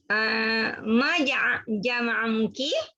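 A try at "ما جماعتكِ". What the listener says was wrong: Ma panjang. Ma panjang.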